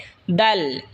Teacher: এরপর হলো দাল। জিহ্বার আগা সামনের ওপরের দাঁতের আগার সঙ্গে লাগা উচ্চারণ হবে দাল। এই সা যেখান থেকে উচ্চারণ হয়েছে সেখান থেকে দাল উচ্চারণ হবে।